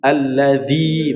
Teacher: suara langsung di ujung ujung lidah dan ujung gigi seri gitu ya